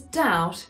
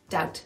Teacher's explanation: she's doing that nice soft T